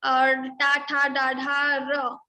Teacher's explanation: with your tongue you have to touch your murdha to produce all this ta varga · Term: Murdhanya